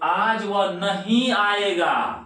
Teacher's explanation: नहीं पर ज्यादा जोर पड़ा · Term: शब्द बलाघात